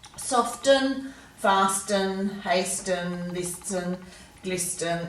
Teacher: it's just too hard to pronounce the T that's why we've dropped it over time · in Australia in particular we're starting to drop the T in words just because we're getting a bit fast and lazy with our speech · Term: silent T